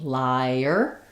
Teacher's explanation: as it connects, you're going to have that little y vowel to vowel linking.